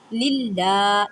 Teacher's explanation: دال پیش دو، الحمد، لام لام زیر لل، لام کھڑی زبر لا، للہ، لام کو مضبوطی سے پڑھیں، لام کو ایک الف کی مقدار میں کھینچ کر پڑھیں